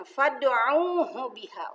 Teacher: Fad di sini ada dal qalqalah sugro, karena sudah mati dari asalnya, dari sanahnya ya. Fad'uhu ada waw sukun setelah baris doma, pasti ini disebut maddo bi'i, dibacanya 2 harokat. Biha. Nah ini ha, ini haknya besar.